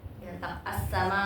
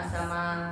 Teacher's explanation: kalau misalnya ada hamzah sukun agak sedikit dihentak ya